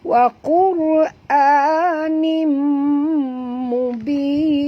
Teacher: Maka kita kena masukkan bunyi tanwin ini ke dalam mim ini disertai dengung 2 harakat. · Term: idgham ma'al gunnah